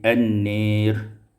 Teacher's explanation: dimalahkan fathah nun dan alif menjadi an-nir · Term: imalatu fathatun nun